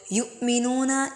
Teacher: حمزہ ساکن جھٹکا دے کے پڑھیں گے